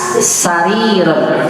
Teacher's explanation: ujung lidahnya pangkal gigi seri bagian bawah